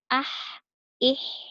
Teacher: kalau huruf H dia agak lebih tipis karena lebih, ke atas tempat keluar hurufnya, yaitu di tengah tenggorokan. Jadi pengucapannya adalah ah, ih, seperti itu.